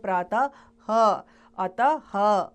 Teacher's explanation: अह की ध्वनि को विसर्ग कहा जाता है। इसका उच्चारण ह की तरह आता है